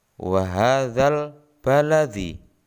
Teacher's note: Jelas, alnya dibaca jelas, bukan wa hadzab baladi. Jadi dalam bacaan alif lam qamariyah ini huruf lam dibaca jelas.